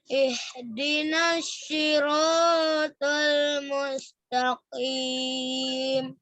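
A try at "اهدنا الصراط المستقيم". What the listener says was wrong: Ingat di ih itu ingat jangan sampai tipis ya. Ihdinas siratal mustaqim.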